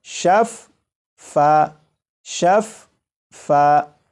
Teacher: آپ غور کریں کہ فا کی آواز دو مرتبہ آ رہی ہے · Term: تشدید